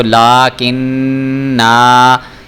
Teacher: اب دیکھیں میں نے یہاں پہ وقف کیا ہے تو میں اس کو لاکن نا، کیونکہ میں نے نون کا آپ کو بتایا تھا کہ جب نون کے اوپر شد آ رہی ہو تو ہم نے وہاں پہ غنہ کرنا ہوتا ہے، اس لیے میں لاکن یہ غنہ کر رہا ہوں، یعنی ناک میں آواز لے کے جا رہا ہوں